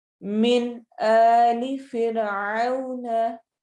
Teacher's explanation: मिन नून साकिन है और इसको हम वाज़िया करके पढ़ेंगे , फिरऔन औ में हम वाव लीन करेंगे, तो हम इसको